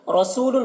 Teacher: رسول، را کے اوپر زبر ہے، را کو پر پڑھیں گے، سو کو ایک الف کے برابر کھینچ کر پڑھیں گے کیونکہ واو مدہ ہے۔